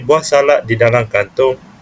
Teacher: perkataan buah itu terdapat vokal rangkap UA, dan buah mempunyai dua suku kata